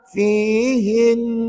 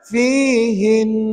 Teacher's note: bunyi Nun sabdu tadi Cuba ulang Fin kekal macam tu bunyi bunyi dengung tu dua harakat jangan lupa